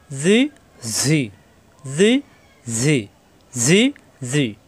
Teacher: ঝাজের জি, জিব্বার নিচে দাঁতে চাপ